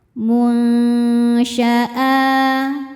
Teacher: Karena nun sukun bertemu huruf syin. Cara bacanya nun disamarkan ke syin disertai bunyi dengung. Dengung dan kesamarannya sama besar. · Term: ikhfa hakiki ausat